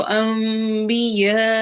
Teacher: नून की आवाज को मीम में बदल देना है। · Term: इक़लाब